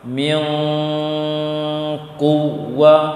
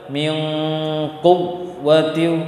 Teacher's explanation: tekan tapi tidak kuat ya, karena dia termasuk huruf waw ini huruf rokhawah, mengalirkan suara.